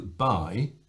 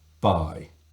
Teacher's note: the first thing you do is close both lips. It's a bilabial stopped consonant. By. So the airflow stops, the lips close.